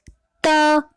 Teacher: जब हम त वर्ण का उच्चारण करते हैं तो हमारी जीवा दांत को स्पर्श कर रही है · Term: दंतय